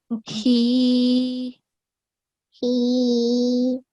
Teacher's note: next we have small ha, and the sound comes from the bottom of the throat.